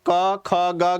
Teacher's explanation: इसकी आवाज कहां से इसका स्वर कहां से आ रहा है ध्वनि कहां से निकल रही है कंठ से निकल रही है